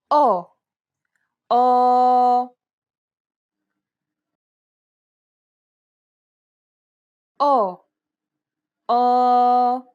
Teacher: The sound is similar to the O sound in the word pot, though try to open and round your mouth more than you would normally.